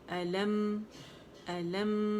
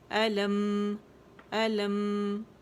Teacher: دونوں ہونٹوں پہ آپ گئے، غنہ اس کا فیل کریں کہ ناک میں آواز جائے گی